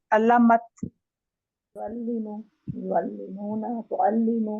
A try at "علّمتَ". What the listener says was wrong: علمت. علمت دیکھیں تشدید ہم نے پڑھنی ہے. علمت تشدید کو ہم نے لے کے چلنا ہے.